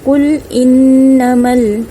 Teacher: nun sabdu ini adalah bacaan dengung, 2 harakat